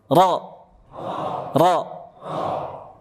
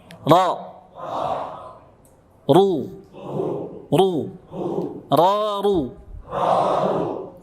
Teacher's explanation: Ini namanya punggung. Punggung ujung lidah menyentuh gusi gigi seri atas plus pangkal lidah diangkat sedikit ke langit-langit mulut agar tebal, tafkhim.